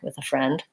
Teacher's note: I for whatever reason have that pretty strong voiceless th for most of my uses of the word with